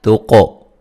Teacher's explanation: قاف کو موٹا اور قلقلہ کریں گے ، تو وولین ہے، بتہم میم ساکن کا اظہار ہے، واولئک